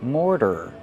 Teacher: More plus the fast D.